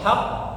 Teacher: qalqalah pada huruf yang bertasydid maka dia ditekan kemudian ditahan ya